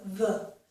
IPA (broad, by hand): ð